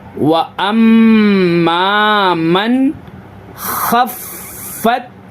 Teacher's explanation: و ام ما، و ام ما، میم کو نون میں ملانا ہے، من، یہاں پہ اظہار کا قاعدہ ہوگا، یعنی نون ساکن کے بعد حروف حلقی کے 6 حرفوں میں سے خا ہے، تو نون کی آواز کو ظاہر کر کے پڑھنا ہے، مطلب غنہ نہیں کرنا، بغیر غنہ کے پڑھنا ہے